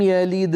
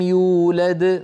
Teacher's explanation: فالدال الأولى بعدها حروف فقلقلتها صغرى ولو كانت هي الحرف الأخير في الكلمة. يولد موقوف عليها، إذن قلقلتها كبرى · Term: القلقلة